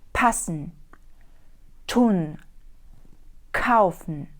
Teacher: приголосні п т к ми вимовляємо з придиханням пан н кауфн старайтеся на початку якомога більше випрямовувати повітря коли